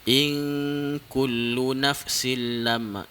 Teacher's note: In kullu nafsil lam, in nun mati bertemu dengan huruf kaf, hukum dia adalah ikhfa. Dia dengung sikit